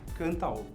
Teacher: Palavra que termina com vogal forte, cantar, você pronuncia bem o a. E logo na sequência uma vogal que é mais fraca, que se pronuncia ligado